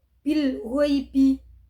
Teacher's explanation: adalah hannya dibaca dengan jelas juga ada bacaan mad lin yaitu pada Gin berharakat fathah bertemu dengan Ya berharakat sukun cara membacanya adalah dipanjangkan dua harakat